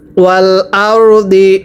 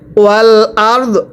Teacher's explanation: ওয়াকফের সময় ওয়াল আরদ দদের নিচে জেরকে বাদ দিয়ে সাকিন দিয়ে পড়তে হবে